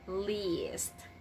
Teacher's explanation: for the word least, it should be the long E sound, so you have to say least. Extend the sound a little bit longer, so you have to say least.